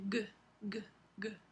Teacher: es una consonante velar oclusiva Sonora